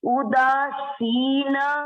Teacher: देखो मैं ऊ को नहीं खींच रही हूँ, अगर ऊ बड़ा होता तो ऊ ऐसे बोलते हैं, अभी ऊ छोटा है